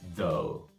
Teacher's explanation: you're gonna make a th sound which is a voiced sound